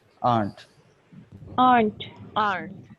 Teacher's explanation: Actually, native speakers don't pronounce or r. They don't say r. They just say aren't.